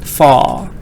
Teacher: It says in this word, we don't say the R in British.